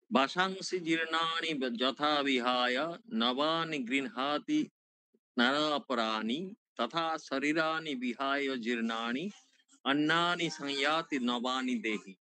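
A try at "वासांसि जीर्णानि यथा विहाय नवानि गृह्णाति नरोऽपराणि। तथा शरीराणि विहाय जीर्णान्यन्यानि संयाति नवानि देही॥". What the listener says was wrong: দীর্ঘ স্বরগুলোকে একটুখানি খেয়াল রাখতে হবে আরকি। শরীরানি মানে রয়ে দীর্ঘই, রয়ে আকার এগুলো সব দীর্ঘ স্বর হবে আরকি। একটু বেশি হ্যাঁ, এটা খুব সুন্দর হয়েছে।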